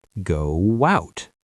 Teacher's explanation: To move to out, your lips naturally make a W shape.